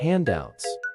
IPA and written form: ˈhændˌaʊts (handouts)